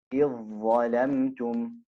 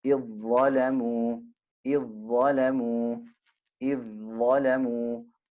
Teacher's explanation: So the dhal merges into the dha, making it إذ ظلموا.